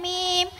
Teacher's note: मीम का मखर दोनों होठों की खुश्की वाला हिस्सा